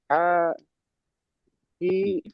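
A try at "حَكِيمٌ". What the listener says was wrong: হা টান দিচ্ছেন কেন? কি টান আছে? হায় টান আছে কি দেখেন প্রথমে, হায় টান আছে কি? জি, হাকিমুন।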